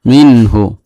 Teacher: নুন সাকিনের পরে হা আসছে ইজহার হয়েছে, স্পষ্ট করে গুন্না সারা পড়তে হবে